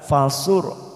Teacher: ra sukun lagi didahului dhammah, kita baca tafkim tebal